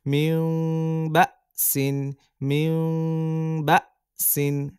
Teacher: মিউ বা, সাদুই জের সিন। হামজাকে ধাক্কা দিবে যেহেতু সাকিন আছে হামজার পরে